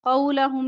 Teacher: قاف موٹا پڑھیں گے لام باریک